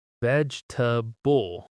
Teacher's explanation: A lot of people say veg-e-ta-ble, four syllables, because that's exactly how it looks. But native speakers actually say veg-ta-ble, three syllables. The second e just disappears.